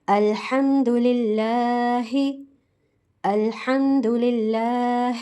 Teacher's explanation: کھڑا زبر کو 2 کاؤنٹس کھینچ کر پڑھا جاتا ہے